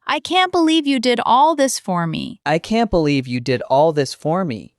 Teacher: Number two, with a faster, higher pitch, often with a laugh, for happy surprises